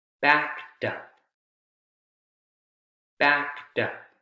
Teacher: T sound, right? Because K is a voiceless consonant sound. But you can hear it clearly. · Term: T consonant sound